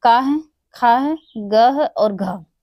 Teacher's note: ये 4 जो हमारे हैं ये कंठ से उच्चारित होते हैं